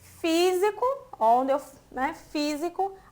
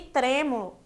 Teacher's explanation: físico tá um som mais aberto, diferente de trêmulo, que eu falo com um som mais fechado